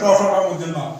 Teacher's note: তাহলে জিহ্বা যখন শক্ত তালুতে স্পর্শ করে তখন থেকে আমরা মূর্ধন্য ধ্বনিগুলো উচ্চারণ হয়, ট, ঠ, ড মূর্ধন্য ণ।